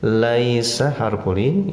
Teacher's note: Laisa harfulin, ya sukun sesudah patah, bacaannya di ayun saja, tidak boleh panjang ya.